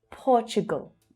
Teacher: That's an unstressed syllable at the end. Very low in pitch.